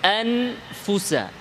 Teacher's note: নুনের নাকের বাঁশির অংশটা থাকবে এবং এটা আরো বাড়বে ইখফার মধ্যে